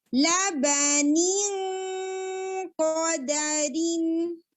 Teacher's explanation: پہلے آپ کسرہ کو شارپ رکھیں نی نی اور پھر آپ پیچھے سے قاف کے مخرج پر ٹنگ کو لے کر جائیں. نی ہیوی اخفاء.